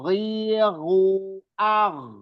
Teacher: Oh, Dia masuk ke dia masuk ke kelompok apa tuh? Kelompok halqi ya, tenggorokan. Masuk kelompok tenggorokan paling atas.